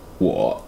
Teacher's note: It actually goes, just starts low and goes lower. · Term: third tone